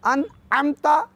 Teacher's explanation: जबकि ऐन है वो मिडल ऑफ थ्रॉट यानी हल्के दरमियान हिस्से से अदा करेंगे। अनअमता याद रहे कि अन की नून साकिन है न कि मुतहरिक। · अन को सिंपल और नॉर्मल तरीके से अदा करेंगे, जबकि ऐन को पढ़ते हुए गले पे ज़ोर देंगे